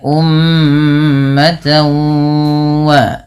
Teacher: cara membacanya adalah memasukkan bunyi tanwinnya kepada huruf wau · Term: idgham